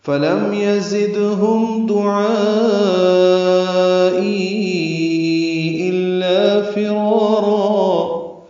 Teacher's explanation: یزدہم ذات صفیر کی آواز سے ادا کریں گے، دال ساکن پہ قلقلہ ہے